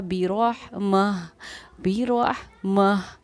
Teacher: गोलता पर वक़्फ़ करना हो तो वो हाय साकिना हा बन जाती है